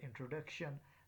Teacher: For example, in the word introduction, the third syllable duc is said with force and is held for a longer time, whereas the first syllable in is held for lesser time and is said with a little force. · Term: primary stress